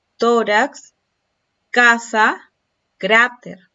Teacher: ¿Dónde está la sílaba tónica? ¿Dónde está la mayor intensidad? En la penúltima sílaba. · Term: palabras graves